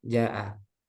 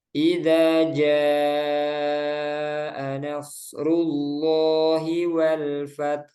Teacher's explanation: Ketika ada mat tabi'i bertemu hamzah dalam satu kata. Panjangnya 4 atau 5 harokat. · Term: mat wajib muttasil